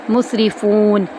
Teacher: رو کو ہم آرام سے پڑھیں گے، یہاں پر رو باریک پڑھی جائے گی، زیر والی ہے